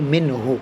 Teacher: قاعدہ اظہار ہے تو غنہ نہیں کریں گے